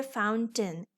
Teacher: ए आई को शुआ की तरह पढ़ेंगे। So it is फाउंटेन।